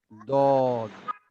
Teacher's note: ডানের বা বামের দাঁতের গোড়াতে লাগিয়ে উচ্চারণ করতে হবে